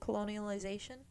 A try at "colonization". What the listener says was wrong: I feel like you're adding an extra syllable in there. Colonialization. That's how you just said it. Colonialization.